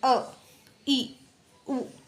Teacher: जिनके उच्चारण में बहुत कम समय लगता है ठीक है और ये एक मात्रा का समय लगता है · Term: हस्व स्वर